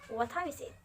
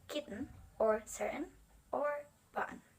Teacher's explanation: the T sounds in what is dropped, and the vowel sounds before it is closed at the glottis